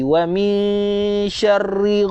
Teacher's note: nun mati berjumpa dengan huruf shin, namanya ikhfa hakiki dengung NGG